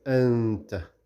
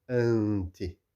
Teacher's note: when we read these two words, anta and anti, you can also hear the sound coming through the nose there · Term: ikhfa